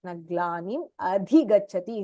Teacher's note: This dha and cha is Mahapranaha here.